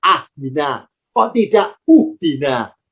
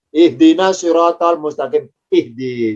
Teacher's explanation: Ya, karena huruf ketiganya kasrah. Karena dalnya kasrah alifnya ikut kasrah. Maka kalau diharokati alifnya harakatnya kasrah berbunyi ih.